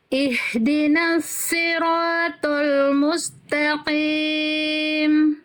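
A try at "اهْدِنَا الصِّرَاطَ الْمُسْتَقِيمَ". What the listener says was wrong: Oke, untuk H besar itu dari pangkat tenggorokan, jadi karakter nafasnya tuh tumpah, Bunda. Jangan jadi agak samar-samar ke H kecil. Slotnya tebalkan lagi, angkat pangkal lidahnya.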